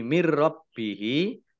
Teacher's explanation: nun sukun bertemu dengan huruf ra bacaan idgham bila gunnah. Masuk dengan tidak mendengung. Ya, langsung masuk ke huruf ro, tetapi tidak mendengung.